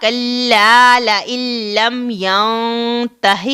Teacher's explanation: ادغام ہوگا، لیکن بغیر غنہ کے ہوگا، یعنی ادغام کامل ہوگا. نون ساکن کے بعد اگر لام آ جائے تو یہاں پر غنہ نہیں کرنا ہے، بلکہ ہمیں سیدھا یہاں پر پڑھنا ہے.